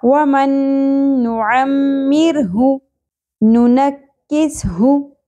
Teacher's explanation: ہا پیش ہوں شارٹ پڑھا جائے گا ایک ہی حرکت ہے